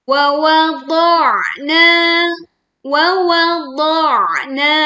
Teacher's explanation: Huruf ad dibaca tebal, lalu tekan huruf ain sukun dengan menyempitkan pita suaranya sehingga suara terdengar lebih berat. Kemudian panjangkan huruf na 2 harokat.